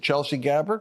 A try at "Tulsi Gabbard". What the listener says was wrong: Tulsi Gabbard. Tulsi. Yeah, Tulsi.